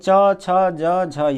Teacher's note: यानी च वर्ग में च, छ, ज, झ, य, ये सब का उच्चारण स्थान किससे होगा? तो तालु से होगा।